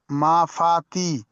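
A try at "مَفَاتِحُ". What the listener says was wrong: বানান করার সময় ওটা টান দিতে হবে। এখানে দেখছেন যে এটা ইয়া মাদ্দা আছে, তাহলে এটা মাফাতিটা টান দিয়ে বলতে হবে, তাহলে রিডিং পড়ার সময় টান দেওয়াটা ঠিক হবে। বানান করার সময় যদি এটা টান না দাও তো তাহলে রিডিং এর সময় গন্ডগোল হবে।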